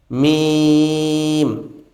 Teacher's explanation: মিমের মাখরাজটি হচ্ছে দুই ঠোঁটের জায়গা হতে